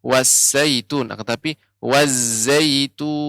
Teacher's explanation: Za ini memang sifatnya sofir, tajam